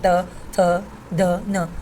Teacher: हमारी जो जीवा है वो हमारे दांत से स्पर्श करती है, दंत्या हो जाती है, जैसे त थ द न।